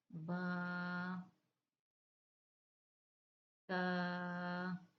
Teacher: با دونوں ہونٹوں کے تر حصے سے ادا ہوگا · تا زبان کی نوک اور اوپر کے دانتوں کی جڑ سے ادا ہوتا ہے